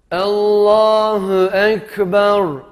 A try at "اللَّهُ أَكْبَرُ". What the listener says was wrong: Allahu Ekber. İkinci hemze de birinci hemze gibi olsun.